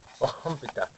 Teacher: That OH has a kind of a slightly K sound in there, but it gives it a very guttural kind of breathiness